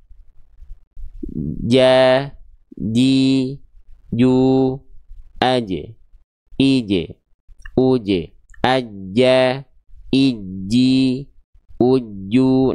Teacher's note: Nih, huruf jim nih. Lihat ya, kalau huruf jim dia tengah lidahnya nempel.